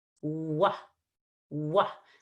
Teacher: All right, now we need to distinguish that from the W, which is very, very different. The W has rounded lips, which protrude very far in front of your teeth. The lips are nowhere near the teeth.